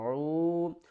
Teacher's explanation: عین کو حلق کے درمیان والے حصے سے ادا کرنا ہے